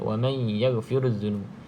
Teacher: idgham ma'al gunnah, caranya masuk dalam huruf ya